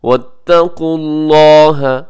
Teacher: लफ्ज़ अल्लाह पुर पड़िएगा क्योंकि उससे पहले क़ाफ़ के ऊपर पेश है।